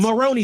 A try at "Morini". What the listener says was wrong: Even though it's Morini, there's no like O at that part.